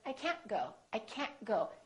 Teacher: you need to hold the T at the end to have a more American accent.